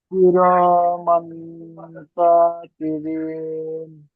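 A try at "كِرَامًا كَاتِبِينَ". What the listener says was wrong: কাটা আরেকটু টান হবে। কিরামান কাতিবিন।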